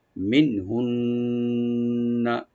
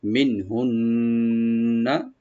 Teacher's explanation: প্রথম নুন সাকিন এখানে জাহার হবে, গুন্না হবে না, মাঝখানে যে নুন সাকিন আছে। আর লাস্টে যে তাজদিদ ওয়ালা নুন এখানে গুন্না হবে, মানে ওয়াজিব গুন্না।